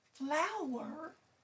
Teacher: Flower has stress on the first syllable.